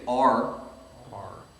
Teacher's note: If you just say R, R. right, there's no tip of the tongue involved. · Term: English R